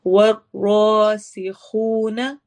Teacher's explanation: روا کو موٹا پڑھنا ہے